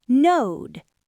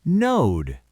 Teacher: It's a long stretched vowel. That's cuz it ends in a voiced D sound.